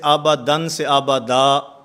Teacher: 2 زبر والی تنوین وقف کی حالت میں الف سے بدل جاتی ہے